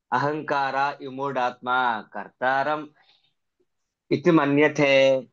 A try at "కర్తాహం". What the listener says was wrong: కర్తాహం, కర్తారం కాదు, కర్తాహం. ఓకే, అలా చదివితే మీరు కొంచెం అక్కడ హమ్ కి పెట్టుకోండి, సో అది ఈజీ అవుతుంది అనమాట. అహంకార విమూఢాత్మా కర్తాహం ఇతి మన్యతే.